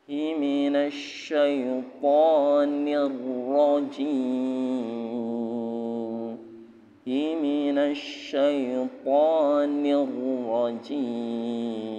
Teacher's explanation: Ini pertemuan antara tipis dan tebal ro. Jadi pertama tipis dulu, kemudian ro-nya kedua tebal.